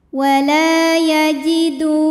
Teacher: ada waw sukun didahului baris dhammah, maka huruf dal panjang 2 harokat. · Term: matobi'i zahiri